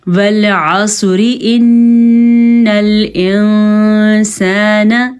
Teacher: اگر اس حرف کے اوپر زیر، اس کے نیچے زیر ہوتی تو پھر یہ را باریک پڑھی جاتی۔ ہاں، اگر ہم وقف نہیں کریں گے تو یہ را ہر صورت میں باریک پڑھی جائے گی۔